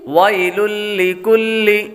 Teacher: آگے حروف دوسرا لفظ ویل لکل، واو کے بعد یا حروف لین میں سے ہے، اس لیے اس کو لمبا نہیں کریں گے